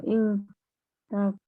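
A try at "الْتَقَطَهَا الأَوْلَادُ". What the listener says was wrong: Iltaqoto ya. Iltaqoto ya. Jadi memang kalau fi'il madhi itu memang kebanyakannya dia berharkat fathah ya untuk huruf terakhirnya.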